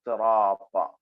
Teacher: സാഹ് ഇസ്തിലാന്റെ അക്ഷരമാണ് അതിനെ കനപ്പിച്ചു പറയണം റാവും തഫ്ഹീം ആയിട്ട് പറയണം താ എന്ന അക്ഷരവും തഫ്ഹീം ആയിട്ട് പറയണം മൂന്നും